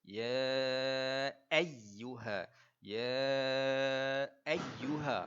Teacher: Jadi kita kena sebut sabdu itu seolah-olah kita ada dua ya dekat situ.